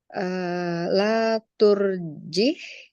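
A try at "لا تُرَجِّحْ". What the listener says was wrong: tasdidnya. Ada tasdidnya. Jangan ditinggal tasdidnya.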